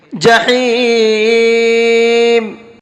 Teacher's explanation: ہا کو حلق سے نکال کر کے پڑھیں گے۔